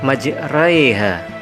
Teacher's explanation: Imalah yaitu bacaan yang condong atau miring dari harokat fathah a ke harokat kasroh i sehingga berbunyi e lemah